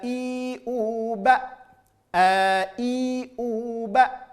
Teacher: huruf hamzah dari pangkal tenggorokan